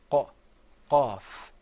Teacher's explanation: Well, the qaf sound comes way back in the very back of your throat. You're going to bring the sound on the soft palate way, way, way back near your throat. And you're going to say qa, qaf.